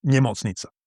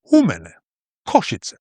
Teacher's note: in standard Slovak, word stress always falls on the first syllable. So hospital is NEmocnica.